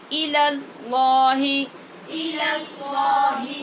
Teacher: پہلے لام کو باریک اور بعد والے دوسرے کو پر پڑھنا ہے